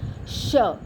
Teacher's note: So when we produce a sound represented by the letters sh, slowly we realize that during the production of the sound, the air escapes through the mouth with friction